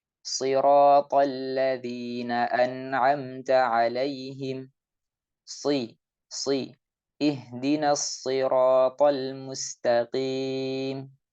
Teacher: shad walaupun kasroh harus kita ucapkan dengan tebal dan harus kita bedakan dengan sin.